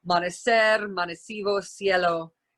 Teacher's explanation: It's just a unvoiced sibilant S sound. · the C before an E or an I is not dentalized the way it is in Castilian Spanish. It's just pronounced like S, just like it is in Latin American Spanish.